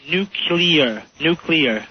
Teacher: It goes NOO, the accent on the NOO. Right. And it goes KLE, and then upside down ER.